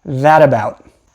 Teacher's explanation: We are probably going to make something called a flap or a tap, which is when your tongue just goes up and down